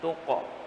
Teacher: Huruf qaf ketika qalqalah dia pantulannya cenderung ke o, bukan tuqe, ya.